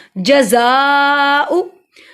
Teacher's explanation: जज़ाउ, जा को इसलिए लंबा किया, जा सख्ती वाला हरूफ है, जा को अदा करने के लिए ज़बान की नोक को दांतों के किनारे से लगाइए। जा को इसलिए लंबा किया क्योंकि अलिफ के ऊपर जो हमजा है, अलिफ जो है जब हरकत आई तो हमजा बन गया, हमजा के ऊपर बड़ी मद 3 अलिफ के बराबर लंबा होगा।